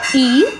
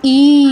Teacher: তিন নম্বর তিন এবং চার একসাথে পড়বো আমরা। কারণ দুটোর শুনতে একই রকম শুধু সময়ের পার্থক্য